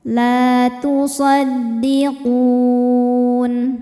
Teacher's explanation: Maka ketika berhenti qofnya ini panjang boleh dua atau empat atau enam harakat. Asal konsisten dalam sekali baca. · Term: mad arid lukun